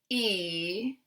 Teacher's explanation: if we say a sound like [i], the tongue is forward. This is a very high forward sound.